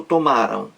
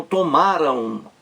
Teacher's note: termina em ditongo nasal o som também sai um pouco pelo nariz é por isso que se chama som nasal Massa ao nariz